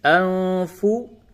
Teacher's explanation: یہ نون ساکن کے بعد فا ہے، جگہ پہ اخفا ہوگا.